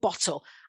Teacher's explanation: it has 2 syllables, and I normally support this by showing students using the finger technique that the stress would be on the first one